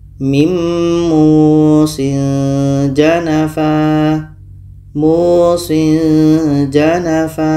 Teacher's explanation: ini ada tanwin bertemu ja ini pun kita baca ikhfa secara samar